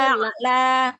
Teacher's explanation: ainnya berikan sifat bainiyah, sedikit mengalir ya.